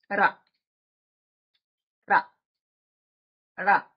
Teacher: మన నాలిక కొస వెనక్కి తిరుగుతుంది మడత పెడతాం ఆ మడత పెట్టి వెనక ఉండే భాగాన్ని తీసుకుని వెళ్లి అంగడికి తాకిస్తుంది. అది